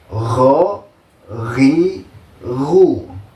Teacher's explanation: tempat keluarnya itu dari ujung tenggorokan sambil ada suara ngoroknya sedikit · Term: huruf ghin